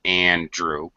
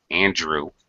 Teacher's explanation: it's very easy to join this voice sound n and this voice sound D because they're they're very close to each other physically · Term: joining sound